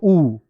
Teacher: होठ भी बन रहे हो और दीर्घ भी हो। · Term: ओष्ठ दीर्घ